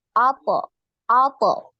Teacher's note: Karena huruf to ini tebal, maka dia itu terdengar seperti oh, ya, karena saking dia tebalnya.